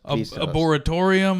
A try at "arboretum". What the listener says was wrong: Arboretorium. There was no atorium in there.